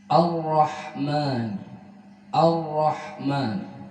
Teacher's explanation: Hendaklah membaca samar, hendaklah menyemarkan getaran huruf ra ketika dalam keadaan tasydid · Ar-Rahman, Ar-Rahman, sedangkan getaran huruf ra itu satu, tidak lebih dan tidak kurang, seperti yang disampaikan oleh pengarang kitab Haqqut Tilawah dalam kitabnya, Syekh Hasani Syekh Utsman, bahwa getaran huruf ra itu tidak boleh lebih dan tidak boleh kurang dari satu dalam keadaan tidak bertasydid ataupun bertasydid.